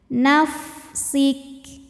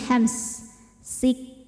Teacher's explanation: selain sifat syidah dari segi suara ya itu suaranya tertahan nafsik Kaf juga punya sifat dari segi angin yaitu keluar angin